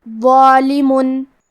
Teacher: اور کیونکہ اس کے بعد مد الف ہے، مد الف اپنے پیچھے والے حرف کا حکم لیتا ہے تفخیم میں اور ترقیق میں، لہذا ہمیں مد الف کو بھی بھاری آواز میں پڑھنا ہے